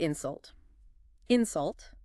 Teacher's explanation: You hear how the first part in is a bit stronger. That's what we call stress, where you put the emphasis on the word.